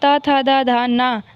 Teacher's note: ता वर्ग, ता, था, दा, धा, ना, दंत, इन्हें दांतों की सहायता से बोला जाता है